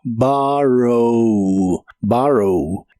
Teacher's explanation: El verbo tomar prestado en el presente de inglés es borrow. La primera O se pronuncia como una A profunda y suena como borrow.